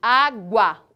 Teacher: uma semivogal o mesmo acontece na palavra água observem aqui água o u Ele é quase imperceptível né o a ele é muito mais forte muito mais presente dizemos então que temos uma semivogal no u e uma vogal · o ditongo presente aqui na palavra água do som mais fraco pro mais forte nós temos um ditongo crescente observem aqui a palavra Uruguai agora